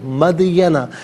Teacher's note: مدینہ دال یہاں ناظرین قلقلہ ہوگا، مدینہ نہیں، مدینہ، سکون اس طرح کرنا ہے کہ آواز لوٹتی ہوئی محسوس ہو۔